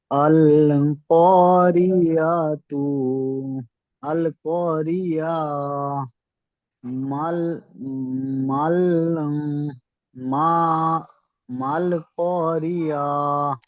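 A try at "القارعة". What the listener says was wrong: আল করিয়া বলে ছেড়ে দেন, এখানে টান দেবেন না। আল করিয়া বলে টান দেওয়ার দরকার নেই। এখানে তো শুধুমাত্র তায়ের উপরে পেশ এসছে, মানে এখানে সাকিন করতে হচ্ছে, সাকিন করলে তো টান হয় না। আল করিয়া, আল করিয়া, আল করিয়া, মাল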